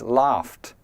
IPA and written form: lɑːft (laugh)